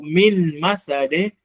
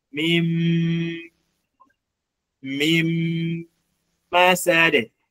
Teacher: utaskip nun alafu utaweka ghunna katika mim actually mim na n zenyewe automatic huwa zinakuwa na nini zinakuwa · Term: idham